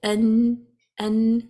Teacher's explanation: So when we say an, even though the sound doesn't find its way out from the mouth from here, it can come out from the other side, the other passage, which is the nasal cavity. So it's not completely blocked. · the sound is finding its way out from khayshum, which is the nasal cavity. So when a sound that comes from the nasal cavity, it's called ghunna, the nasalization.